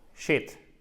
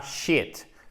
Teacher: C'est un I court, shit, et pas shit. Puisque si vous dites shit, c'est la feuille, ok?